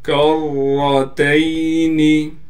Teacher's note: کاف کو را سے ملائیں گے. را پر تشدید ہونے کی وجہ سے تھوڑا ٹھہراؤ بھی کریں گے اور را کو موٹا بھی کر کے پڑھیں گے